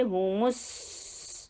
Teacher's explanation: सीन करते हुए होंठ गोल नहीं होंगे, लेकिन जैसे ही सीन की दम्मा को आप शो करेंगे आपके होंठ गोल हो जाएंगे